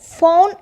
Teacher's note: ഫോൺ എന്ന് പറയുമ്പോൾ ആ ഔ എന്ന് പറയുന്ന സൗണ്ടാണ് അവിടെ വന്നിട്ടുള്ളത്. അത് ഡിഫ്തോങ് ആണ്. കോമ്പിനേഷൻ ഓഫ് വവൽ സൗണ്ട്സ് ആണ് അവിടെ വന്നിട്ടുള്ളത്.